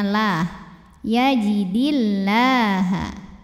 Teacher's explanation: lam pada lafaz Allah dibunyikan secara tarqik sebab huruf sebelumnya berbaris kasrah maka cara bacanya tipis jadi pangkal lidah datar